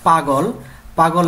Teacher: শব্দ রয়েছে এই পাগলের প হচ্ছে উষ্ঠ পভ এগুলো হচ্ছে উষ্ঠ গ হচ্ছে কণ্ঠ এবং ল হচ্ছে দন্ত